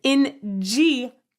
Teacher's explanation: And in G If you do that, you can feel, oh, it really closes off part of the the vocal tract. The middle part of your tongue really is closing the vocal tract off. And redirecting all the sound through your nose. So, this one actually exits through your nose.